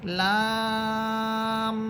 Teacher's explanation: আমি লাম বলে 4 আলিফ পরিমাণ টানতেছি, টানার পর আমি মিমকে গিয়ে ধরতেছি, ওই ধরার সময় গুণ হবে